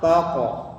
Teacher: karena qaf itu termasuk huruf isti'la, jadi tebal ya. Jadi jangan take, tapi taqo, tebal, taqo. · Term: Qalqalah